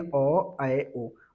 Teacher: अर्ध विवृत का मतलब होता है हाफ ओपन यानी मुख क्या हो आधा आधा खुला रहे।